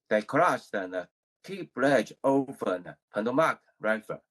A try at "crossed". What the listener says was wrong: Good, but I think you put these 2 words together. I think you put them together. They're 2 different words, right? They're 2 different words. Let's keep them separate, right?